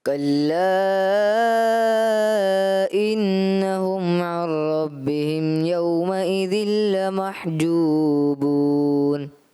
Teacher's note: عین کی ادائیگی بھی کلیئر نہیں کی اور پھر را بھی تھوڑا باریکی کی طرف گیا